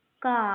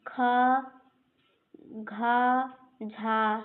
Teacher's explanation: क अल्पप्राण है और ख घ झ ये सब महाप्राण हैं